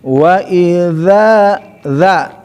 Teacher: ingat bukan za tapi setiap dza digigit ya jadi taraf lisan ujung lisan dza ya huruf yang lisan itu